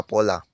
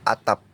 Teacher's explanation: Misalnya pada kata pola, fonem P diucapkan secara lepas yang kemudian diikuti oleh fonem O. Sedangkan jika berada di akhir kata atau suku kata, fonem P tidak dapat diucapkan secara lepas. Bibir kita akan tertutup untuk mengucapkan bunyi ini. Misalnya pada kata atap. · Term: tidak lepas